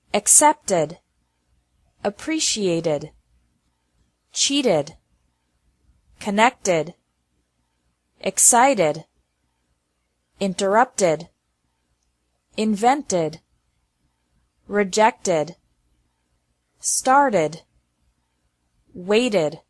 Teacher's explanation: Laughed, fixed, relaxed. The second pronunciation of Ed is like Ed with an extra syllable, after verbs ending with a T or D sound.